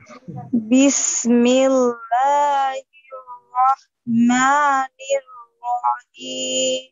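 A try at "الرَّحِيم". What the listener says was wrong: রহিম আরেকটু চাপ দিয়ে হার বাতাসটা বের করেন হ্যাঁ রহিম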